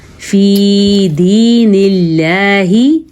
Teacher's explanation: اللہ کا نام باریک پڑھنا ہے کیونکہ اللہ کے نام سے پہلے زیر ہے۔ یہ دیکھیں نون کے نیچے زیر ہے اس لیے اللہ کا نام باریک پڑھنا ہے۔